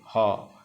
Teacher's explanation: तो जंतरमुखी से उच्चारण है ह करके देखो ह, तो नाक और मुंह का जो संधि स्थल है वहाँ से है